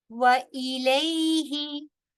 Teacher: حمزہ کے نیچے زیر ہے، اس کو پراپر طریقے سے آپ نے زیر کو پروناؤنس کرنا ہے تاکہ وہ مجہول نہ ہو